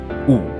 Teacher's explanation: U is a high, back, rounded vowel.